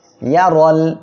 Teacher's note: র অক্ষরের উপরে এখানে দেখেন জবর আসছে, মোটা করিয়া পড়তে হবে।